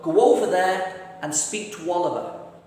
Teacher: after the sound oo, as in to, again the W sound will jump into the middle.